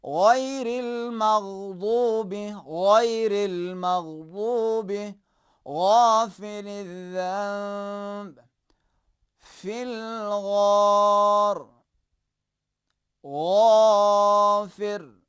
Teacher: کوئی شخص جب پانی گلے میں ڈالنے کے بعد غرارے کرتا ہے تو جو آواز سنائی دیتی ہے اسی انداز میں حرف غین کو بھی تلفظ کرنے کی کوشش کرنا چاہیے۔ غافر، غرارے کو یاد رکھیں۔